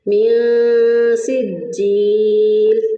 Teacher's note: اب نون ساکن کے بعد دیکھیں، میاں کے جو نون ساکن ہے اس کے بعد نہ حروف حلقی، نہ حروف یرملون میں سے کوئی حرف، نہ ہی با ہے اور نہ ہی الف ہے، لہٰذا یہاں پر ہم اخفاء حقیقی کریں گے۔ نون ساکن کی آواز کو چھپا کر ہم ادا کریں گے